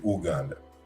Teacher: the b has been dropped since we now say uganda